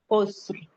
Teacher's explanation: رو پہ وقف کریں گے تو رو کو ہیوی پڑھیں گے